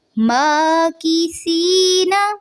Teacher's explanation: یا ساکن سے پہلے زیر ہے، مد اصلی ہوگا، اور نون کی زبر کو لمبا نہیں کرنا. ماکثین، اور اس کو ماں نہیں پڑھنا، ما.